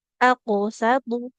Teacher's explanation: jangan sampai huruf qof itu tebal ketika dipantulkan jadi tipis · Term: huruf qalqalahnya